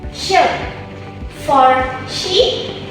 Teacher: A bit further back, we have the post-alveolar sounds produced when the tongue moves slightly behind the alveolar ridge